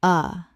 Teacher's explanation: The schwa is a tiny relaxed sound like a grunt. It sounds like uh.